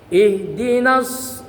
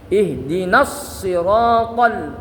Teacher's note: Sebab ada panjang ketemu dengan sukun atau tasdid dalam dua kali kalimat. Maka panjangnya harus dibuang. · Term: takhallus bil hadfi